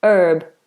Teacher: they say herb so they won't say the H